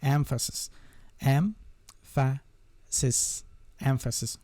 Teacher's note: emphasis the stress is on the first syllable